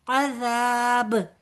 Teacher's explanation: اِلَىٰ أَشَدِّ الْعَذَابِ، با ساکن ہو جائے گا لہٰذا یہاں پر کلکلا کے ساتھ فنش کریں گے